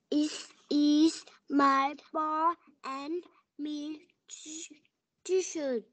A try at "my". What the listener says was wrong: Từ này đọc là my, không có đọc là me nha.